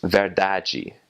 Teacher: in Brazilian Portuguese, when you have a DI or a DE at the end of a word, that will make a J sound. So the word for truth is verdade.